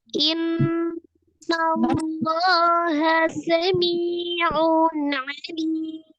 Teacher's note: Sami'un, sami, miyamad, ada ya sukun sebelumnya kasrah di huruf mim, dua harakat. Un tanwin bertemu dengan huruf ain, dibaca izhar. Izhar halqi karena ini salah satu huruf al-halqi atau tenggorokan.